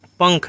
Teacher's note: पंख में प के ऊपर में बिंदी लगी हुई है, लेकिन इसका उच्चारण कैसा हो रहा है? अंग की तरह हो रहा है। अंग जो है वह क वर्ग का जो है अक्षर है। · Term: अनुस्वार